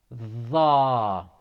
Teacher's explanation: The tongue is rolling forward. It is again pronounced from the tip of the tongue to edge of the upper incisors. So don't stick your tongue out as much as with da or as much as with tha.